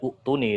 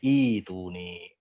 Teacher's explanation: kaidahnya hamzah wasal bertemu dengan hamzah qata dia jadi diibdalkan. Nah, jadi mad.